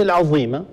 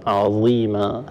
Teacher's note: ظاء تخرج من طرف اللسان مع اطراف الثنايا العليا